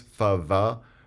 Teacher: whereas the fricatives fava are labiodental